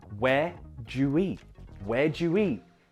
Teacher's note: Again, notice that because the next verb begins with a vowel sound, it's more of a oo than a schwa